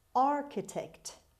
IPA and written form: ˈɑːrkətekt (architect)